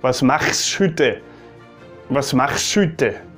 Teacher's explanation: One thing that I also noticed, I mean that's quite well known already, is that the CH sound, they pronounce it very like back in the throat, like even stronger than Germans